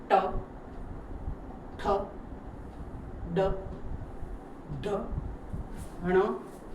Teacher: છે તમને એમાં નહી સમજણ પડે તો તમારો આ જીભનો ઉપરનો તાળવાનો વચ્ચેનો જે ભાગ છે ત્યાં તમારી જીભ ટચ થાય છે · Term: મુરધા